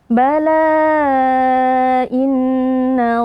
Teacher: Tapi karena mad thabiinya bertemu dengan hamzah pada kata inna maka dia berubah sifatnya menjadi salah satu mad far'i yaitu mad jaiz munfasil. Cara membacanya kita panjangkan empat atau lima harakat.